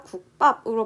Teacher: 뒤에 있는 비읍이 쌍비읍으로 바뀌고 있죠